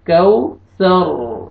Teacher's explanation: سا کو آپ نے را کے ساتھ ملانا ہے، وقف کی صورت میں را کو پر کریں گے